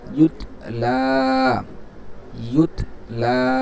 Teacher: ইয়াতা পেশ ইউত, লাম ইয়া খাড়া জবর লা, ইউত লা, ইউত লা। একটু লাতে একটু টান দেবো যেহেতু খাড়া জবর